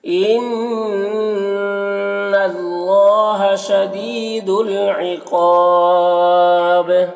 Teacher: شدید میں یا مدہ ہے، اسے ایک الف کے برابر کھینچیں گے ، عقاب قاف کو پر پڑھیں گے اور یہاں پر وقف